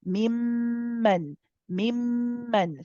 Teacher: Again, akmal gunna. We're going to hold the joining of the memes. Mim, and there is a gunna. There is a nasalization with that.